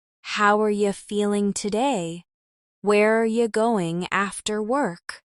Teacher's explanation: How are you becomes how are ya, and where are you becomes where are ya.